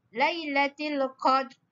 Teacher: Kena sebut ra tu tebal.